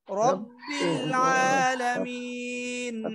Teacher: র ফাতহা বা শাদ্দা রব, রটা মোটা হবে। রব্বিল আলামিন আলামিন আইন কণ্ঠনালীর মাঝখান থেকে চাপ দিয়ে বলতে হবে, হামজার মতো যেন না হয়।